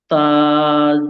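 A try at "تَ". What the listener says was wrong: তা টান হবে না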